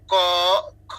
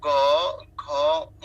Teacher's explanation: প্রথম দুইটা হচ্ছে অঘোষ, মানে স্বরতন্ত্রী কম কাঁপে। আর পরের যে তিনটা, সেগুলো হচ্ছে আপনার ঘোষ, অর্থাৎ স্বরতন্ত্রী কিছুটা বেশি কাঁপে উচ্চারণ করার সময়।